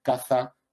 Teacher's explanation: el ceceo verdad que es pronunciado como interdental